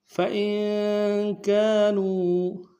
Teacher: فَإِن میں حمزہ کو نون ساکن سے ملانا ہے، نون ساکن میں غنہ کریں گے